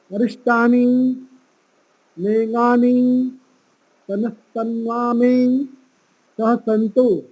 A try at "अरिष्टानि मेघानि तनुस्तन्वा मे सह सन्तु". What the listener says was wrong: देखिए, एक तो यहाँ पर हमें जो मात्रा का, जो हमने पहले बताया था, छोटी ई की और बड़ी ई की मात्रा, उसका ध्यान। अरिष्टानी मेंगानी ऐसा नहीं बोलना है, अरिष्टानी मेंगानी लंबा नहीं करना है, फिर वो लंबा करेंगे तो वो दीर्घ ई की मात्रा हो जाएगी।